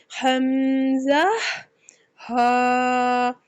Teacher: इनका मखरिज हलक के नीचे वाले हिस्से से अदा किए जाते हैं। ये हरूफ हलकिया में से है और ये हलक के नीचे वाले हिस्से में से अदा किए जाते हैं।